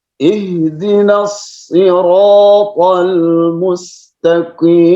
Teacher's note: Sod itu ada sifat sofir, ada sifat isti'la, ada sifat itbaq, ya. Itbaq itu lawan dari infitah, ya.